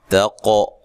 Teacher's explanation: قاف کو موٹا ادا کرنا ہے اور قلقلہ کرنا ہے